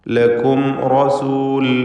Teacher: ലക്കും എന്നതിൽ സാക്കിൻ തമീമിനെ ഇദ്ഹാർ ഷഫവി നൽകി മണിക്കാതെ വെളിവാക്കുക